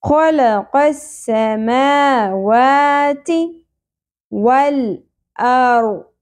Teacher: تھرتھراہٹ کا ایلیمنٹ ہے را میں